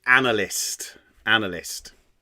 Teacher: So these are 3 syllables. The first syllable is stressed and the second and third are unstressed. So trisyllabic dactylic pairs.